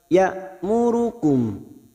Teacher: Nallaha ya'murukum hamzah sukun jangan samakan dengan ain. Hamzah sukun sifatnya sidah. Ya'murukum harus dibaca jelas.